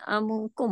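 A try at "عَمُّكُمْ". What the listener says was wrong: Betul, amukum.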